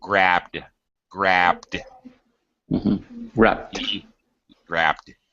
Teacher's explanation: with a D sound immediately following the B grabbed okay uh all right the person who does the activity